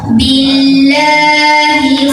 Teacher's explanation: mad asli karena ada baris fathah berdiri di atas huruf lam, dibaca panjang 2 harokat.